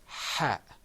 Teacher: It comes from the back of your throat, whereas the ha sound has a kind of gentle hissing sound, or a gentle hoarse sound